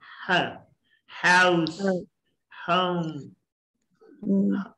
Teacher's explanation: अब ह ग्लोटल है, गले से निकली है ये